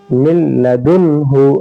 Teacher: نون ساکن کو ہم لام سے ملا دیے اور نون ساکن کی آواز نہیں آئے گی بالکل